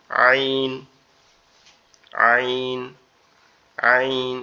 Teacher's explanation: কণ্ঠনালীর মধ্যখান হইতে একটু চাপা আওয়াজে উচ্চারিত হবে আইন, আইন, আইন, এরকম একটু চাপা আওয়াজে উচ্চারিত হবে আইন, আইন, এরকম ভাবে।